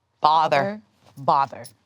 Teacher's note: The bother was rounded.